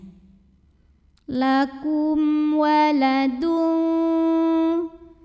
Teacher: mim sukun dibaca dengan izhar jelas bunyi m nya